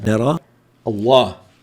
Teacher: الكلمة السابقة مفتوحة فتأتي لام لفظ الجلالة هنا مفخمة